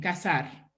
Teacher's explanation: That in your dialect is pronounced the same as casarse. Casar with S, and with Z, you pronounce it the same, casar, right?